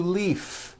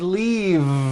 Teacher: a hurry and I need to Leaf is that correct no it's not leaf with an unvoiced F I should have said leave with a voiced V sound